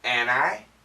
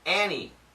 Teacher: we've studied the N can kill the T sound.